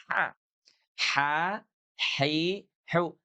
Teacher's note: Jadi huruf H ini keluarnya dari tengah-tengah tenggorokan.